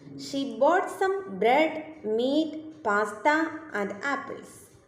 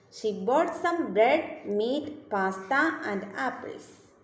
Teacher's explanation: the voice Rises and then Falls in stating a list